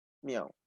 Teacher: La I es una vocal cerrada, entonces se cumple, cerrada. La A es una vocal abierta, se cumple, abierta. Y la U es una vocal cerrada, se cumple, cerrada. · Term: triptongo